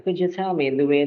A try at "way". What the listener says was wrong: The way, not the why.